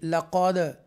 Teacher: ایکو sound کے ساتھ ہم دال ساکنہ کو ادا کریں گے